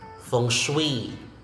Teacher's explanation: the stress is in the second syllable, the second word